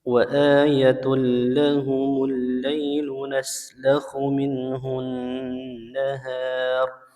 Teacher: Ya, di ayat 37 di sini ada tanwin bertemu dengan huruf lam, hukumnya idgham bila gunnah. Ya, tanwinnya melebur ke huruf lam tanpa gunnah